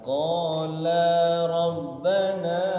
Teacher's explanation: La-nya panjang 2 harokat.